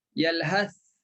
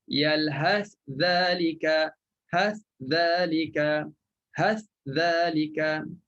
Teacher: Kalau berhenti, memang kita kena baca dengan matikan sa. Jelaslah huruf sa tu. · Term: izhar